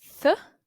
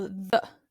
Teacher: Here you've got th, which is unvoiced, or the, which is voiced.